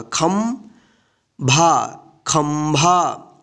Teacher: यहाँ पे देखिए ख के ऊपर क्या है? बिंदी है, तो यहाँ पे आधा न के रूप में उच्चारण नहीं होगा, आधा म के रूप में इसका उच्चारण होगा।